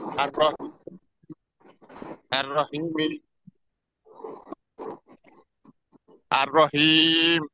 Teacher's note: আর হাঁটা উচ্চারিত হবে গলার মাঝখান থেকে, এটা একটু খেয়াল করে আপনি পড়েন